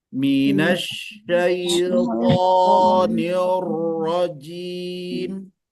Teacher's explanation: shin tidak ada hubungannya dengan dua bibir, jadi nggak boleh minash, nggak boleh monyong, jadi tidak boleh bergerak.